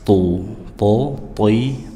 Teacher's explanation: To diucapkan dari ujung lidah menempel dengan gusi atau pangkal gigi seri atas dengan menaikkan pangkal lidah dekat tenggorokan